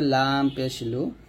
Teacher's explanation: লামটা আমরা জিহ্বার আগার কিনারা উপরের মায়ের দাঁতের সঙ্গে লাগবে